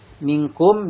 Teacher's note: atau didengungkan minkum di sini ada mim mati bertemu dengan Wow dinamakan Idhar syafawi ya dibacanya jelas tanpa mendengung